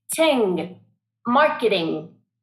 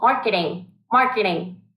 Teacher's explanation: we have the ng, and that is a very nasal sound. That means you're using your nose.